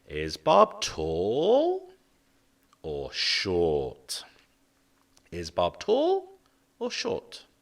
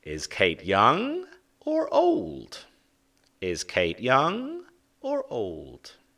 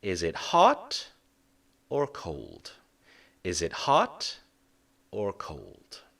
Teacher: the first adjective we have a rising intonation